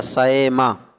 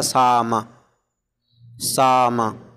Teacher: اور سئما یسأمو سمیا سے ہے، تو سئما میں بین بین جاری ہے، بین بین بعید اور بین بین قریب دونوں کیا جا سکتا۔ جب بین بین قریب کیا جائے گا تو حمزہ کو حمزہ اور یا کے مخرج کے درمیان پڑھا جائے گا سئما، اور جب بین بین بعید کیا جائے گا تو حمزہ کو حمزہ اور الف کے مخرج کے درمیان پڑھا جائے گا ساما ساما۔